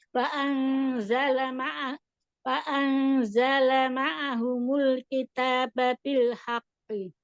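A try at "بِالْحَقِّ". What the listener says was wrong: Haqqo, kalau berhenti di situ bukan haqqi, tapi dia bil haqqo. Wa anzala ma'ahumul kitaba bil haqqo. Ada jeda. Kenapa? Karena di atas bil haqqo. Haqqo. Ini bil haqqi.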